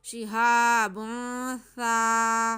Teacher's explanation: सा को नरमी से पढ़ेंगे। ज़ुबान की नोक ऊपर वाले चौड़े जो दो दांत हैं उनकी सिरों से लगेगी और नरमी से बिल्कुल आराम से, इसमें बिल्कुल सीटी की आवाज़ नहीं आएगी।